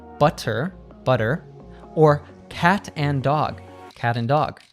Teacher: The tap T. This happens when a T is between 2 vowel sounds